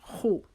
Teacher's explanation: خا ہمارے حلق کے اوپر والا حصہ جیسے ہم اپنا گلا صاف کرتے ہیں تو ہماری آواز آتی ہے، اس طریقے سے ہماری خا کی آواز آئے گی۔